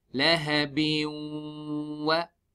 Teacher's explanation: We do idgham with ghunna. Means we take the sound to the nose and stretch it harakatain. Laha bin. This bin will join into waw.